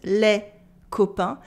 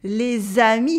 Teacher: If you've never heard of it, this is la liaison. A silent letter is heard because there is a vowel after.